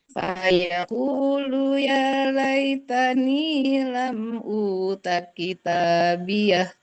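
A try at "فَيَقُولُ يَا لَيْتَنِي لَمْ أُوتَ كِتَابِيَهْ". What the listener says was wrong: Iya-nya ya, yang agak naik ya-nya. Ya laitani, tani. Nah, itu tak sama nih-nya.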